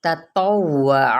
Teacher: تو پر پڑھا جائے گا اور اس کی حرکت کو لمبا نہیں کرنا